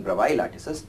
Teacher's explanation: the s is slightly silent in bravais